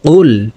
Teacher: কফকে জিহ্বার গোড়া থেকে উচ্চারণ করতে হবে। কফ লাম পেশ কুল।